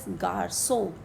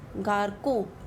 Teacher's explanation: And the sound of C, the K sound, it becomes S. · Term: l'accent cédille